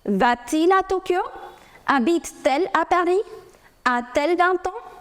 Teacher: After inversion of your subject and the verb, if your verb is ending with a vowel and your subject is beginning with a vowel, there is a clash of two vowels, you add T in between